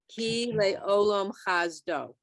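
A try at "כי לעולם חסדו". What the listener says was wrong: It's an S, simple S. It's not a Z. It's an S. Chasto.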